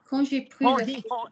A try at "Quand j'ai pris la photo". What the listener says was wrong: Don't stammer. Don't pause. Slide from the communicated vowel you wish to give my ears to the next communicated vowel you wish to give my ears.